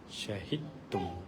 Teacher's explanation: Jadi tak perlu ada apa-apa bunyi untuk dal.